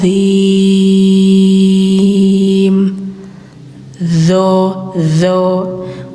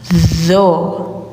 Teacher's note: Huruf doo ini tempatnya sama seperti pengucapan dza. Cuman kalau doo itu lebih tebal lidah dalamnya angkat